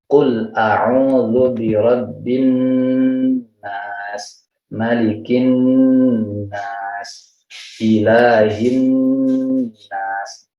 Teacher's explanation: nun bertasydid harus dibaca gunnah, jadi keluar dari hidung. Keluar dari hidung dan ditahan kira-kira 3 ketukan. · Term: gunnah musyaddadah